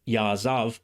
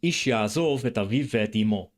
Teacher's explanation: ya'azav, with an A vowel rather than an O vowel, because it's a special form used before a pause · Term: pausal form